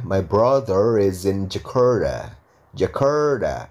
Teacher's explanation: R ketemu T ketemu vokal A. Berarti T-nya diganti D.